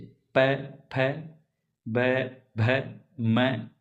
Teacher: दोनों ओष्ठ आपस में स्पर्श करते हैं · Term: ओष्ठय व्यंजन